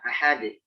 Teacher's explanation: lebih mengarah kepada imalah, mengarah pada bunyi e.